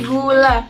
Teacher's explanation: G adalah bunyi yang dihasilkan dengan menutup bagian belakang langit mulut. Contohnya seperti gula.